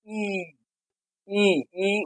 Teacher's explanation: ওষ্ঠটা কেমন হয়ে যায় দেখো, আমরা ই উচ্চারণ করার সময় একটু দেখাই, দেখো ই, ই, ই উচ্চারণ করার সময় দেখো ওষ্ঠটা বড় অর্থাৎ প্রসারিত হয়ে যায়। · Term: প্রসারিত স্বর